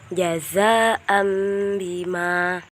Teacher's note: Iklab itu cara membacanya yaitu seperti mim.